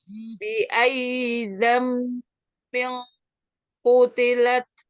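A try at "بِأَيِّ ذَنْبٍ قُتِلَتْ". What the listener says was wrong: Perhatikan zal ya, terus. Za, tipiskan lagi. Dan kutilat, kutilat, kutila, lala, lat. fathahnya ya, nanti buka.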